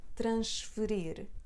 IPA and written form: trɐ̃ʃ-fə-rir (Transferir)